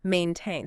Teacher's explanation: The verb maintain has that clear A diphthong, like in rame, maintain.